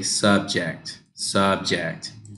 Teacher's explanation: it sounds like you're going down up down up